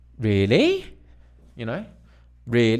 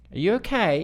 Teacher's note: a rising tone it can be questioning or it can indicate surprise or insecurity because really you know really that's a surprise are you okay